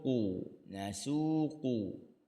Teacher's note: qu tu jadi tebal sebab dia huruf qaf